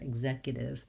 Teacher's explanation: I'm going to rewrite this T as a D because Americans will flap that T, meaning they'll turn their voice on and they'll link together, executive, rather than saying executive with a pronounced T sound.